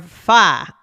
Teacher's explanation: the R is very different, right? Yeah. So, it can be very weak or even dropped.